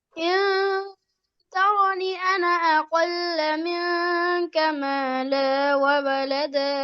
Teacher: আনায় মাদ হবে না, মিলিয়ে পড়লে মাদ হবে না, থামলে মাদ।